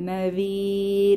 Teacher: নাযীর, এখানে জালের মাখরাজ খেয়াল করব, পাতলা করে পড়তে হবে, সফট লেটার, জিহবার আগা দাঁতের আগা নরম আওয়াজ।